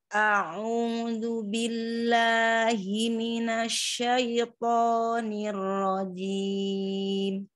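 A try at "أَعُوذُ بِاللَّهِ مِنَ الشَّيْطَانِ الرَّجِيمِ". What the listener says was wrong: Di asya tidak minas, tidak monyong. Coba kita cari makhraj sin. Sin itu satu makhraj dengan jin. Tapi giginya jangan dirapatkan. Jangan di as itu, jangan dirapatkan. Jangan gigi, jangan rapat, jangan dirapatkan. Jadi kalau kita dirohahkan, giginya jangan dirapatkan. Jadi tidak mengalir. Jangan rapat. Agak renggang.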